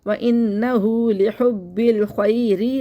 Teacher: را کے نیچے زیر ہے، اس لیے اس کو باریک پڑھیں گے